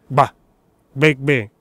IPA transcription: g͡b